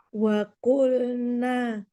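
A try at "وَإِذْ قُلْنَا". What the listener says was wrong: Wa id qulna, ada wa idnya. Wa id qulna. Wa id qulna lil malaikah.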